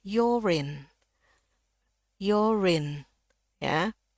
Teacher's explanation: your tapi di sini ya dia bunyinya lebih ke O ya. Jadi or di sini R-nya bunyi. Kenapa? Karena bunyi selanjutnya adalah I. Jadi bisa masuk langsung Yorin.